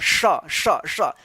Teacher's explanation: ये जीभ ऊपर जाकर तालु में सटेगा और तब आवाज का घर्षण हवा निकलेगा, तब उच्चारण होता है श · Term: तालब श